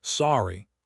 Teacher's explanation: Sorry, rising intonation. This is the most common and neutral.